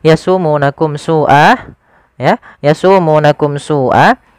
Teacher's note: Di sini ada bacaan izhar syafawi yaitu adanya mim mati bertemu dengan huruf sin. Maka dia harus dijelaskan suara mimnya.